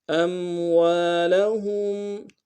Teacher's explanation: ہا کو میم ساکن کے ساتھ ملانا ہے، میم ساکن میں غنہ کریں گے